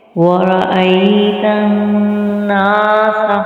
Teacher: نون پر غنہ کریں گے اور الف مدہ کی وجہ سے اس کو کھینچیں گے ایک الف کی مقدار کے برابر